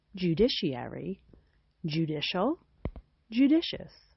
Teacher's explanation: The ooh sound is written in IPA as a lowercase u. These words which are related to the word judge start with a j followed by an oo sound.